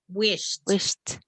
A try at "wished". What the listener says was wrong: More of a T